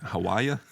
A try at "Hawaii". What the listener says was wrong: Hawaii. You added syllables, sir.